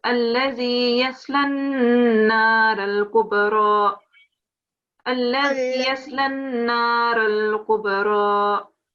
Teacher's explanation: make sure that you have 2 seconds on the noon sound. It's with the mushaddad.